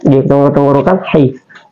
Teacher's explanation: ha adalah sebagai huruf wastul halki, keluar di tengah tenggorokan